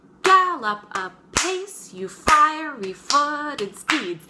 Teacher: the first one is stressed, second syllable unstressed, and then we go right back into iambic pentameter. We go, gallop apace, you fiery-footed steeds.